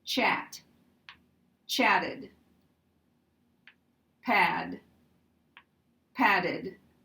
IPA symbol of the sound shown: əd